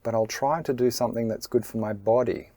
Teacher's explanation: That middle part of the sentence really is flat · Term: intonation